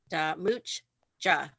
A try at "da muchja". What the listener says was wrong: There you go.